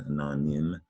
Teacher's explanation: it's not nime, it's nim. It sounds like a short I sound